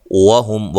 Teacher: واو کو ادا کرتے دونوں ہونٹوں کو گول کرنا ہے، وہم میم ساکن کا اظہار ہے، غنہ نہیں کریں گے